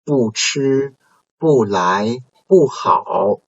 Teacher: 不 is followed by respectively the first tone, second tone, and third tone syllable, and there's no change in tones